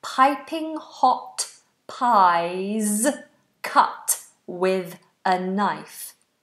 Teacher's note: make sure with is th between the teeth please